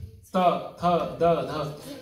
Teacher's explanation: we have t then the sound comes from the uh the the tongue is touching the teeth